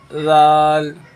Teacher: दाल के अंदर भी दांतों के बीच में ज़बान लगाना होती है